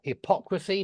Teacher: The stress is on the O, hypocrisy